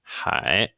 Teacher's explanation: it's kind of a longer tone when it's pronounced. It goes up and down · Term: third tone